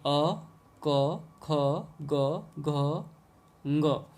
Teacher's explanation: देखिए अ, क, ख, ग, घ, ङ और विसर्ग है। इन वर्णों का उच्चारण करते समय वायु कंठ को स्पर्श करती है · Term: कंठ्य